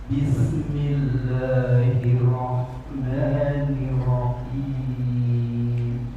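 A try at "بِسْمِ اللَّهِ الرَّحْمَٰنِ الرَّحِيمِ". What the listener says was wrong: Boleh ulang bismillahnya. Tambah tasdid sedikit. Bismillahirrahmanirrahim. Coba tambah dikit.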